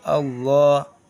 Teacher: لفظ اللہ کے پہلے زبر یا پیش ہو تو لفظ اللہ کے لام کو پر پڑھیں گے